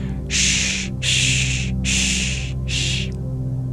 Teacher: We also have the SH sound, which is a palatal sibilant by arching our tongue up to the roof of our mouth.